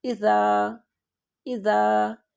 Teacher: ہم الف کو تھوڑا سا لمبا کر کے، یعنی کہ 2 حرکت تک لمبا کر کے اس کو پڑھیں گے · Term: حروف مدہ